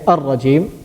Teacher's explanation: Yes, that it's pronounced from the tip of the tongue. Ra is pronounced from the tip of the tongue